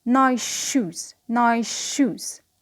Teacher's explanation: So we notice that the s becomes sh before sh. Again here, We don't pronounce two sh, but we pronounce it as one sh, but slightly longer than usual, and we make a linking process.